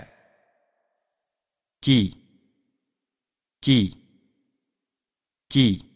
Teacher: Корень языка чуть приподнимается. Перед фатхой и кесрой чуть смягчается.